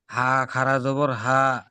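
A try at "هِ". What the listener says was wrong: খাড়া যাব, হা খাড়া যাব না, নিচেই জের আছে, তাহলে হা খাড়া জের হি, ফি হি, জের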